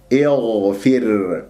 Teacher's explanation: والغين مفخمة مرتبة رابعة لأنها ساكنة، والبعض يقرأ الغين مشمومة خاء لأن الغين والخاء من أدنى الحلق نفس المخرج، لكن الغين يجري فيها الصوت والخاء الصوت والنفس، فإن أجريت الهواء في الغين النفس أشممتها خاء.